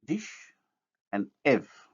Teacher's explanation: These two words contain front spread vowels, that is, minus back, minus round.